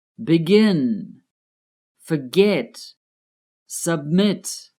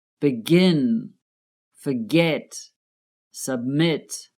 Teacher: The last syllables are stressed, so we have to double the final consonant and add an ing to the end of each.